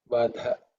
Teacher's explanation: So in this case, Vada, we have actually reduced the amount of air which we release. In the case of Vadha, we are not controlling anything. The air just flows out. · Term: Mahaprana